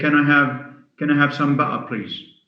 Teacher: a glottal stop this happens in in cockney english